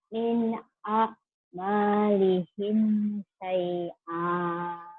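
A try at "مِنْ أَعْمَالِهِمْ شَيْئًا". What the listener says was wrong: Shinnya syai. Min amalihim shin. Syai'a. Shinnya dibuka. Yo biar besar. Ya syai'a. Dilatih ya nanti shinnya ya.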